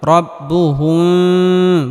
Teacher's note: মিম সাকিনের পরে বা আসার কারণে এখানে মিম সাকিনকে গুন্নাহ করে পড়তে হবে